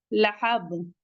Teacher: नारन ज़ाता लहब, लाम मुतहर्रिक है, जल्दी पढ़ेंगे, हा हलकी से है, और बा पे कलकला करेंगे। लहब कलकले कुबरा।